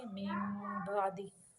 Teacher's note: नून की आवाज़ को मीम के अंदर मिला के हम पढ़ेंगे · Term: इक़लाब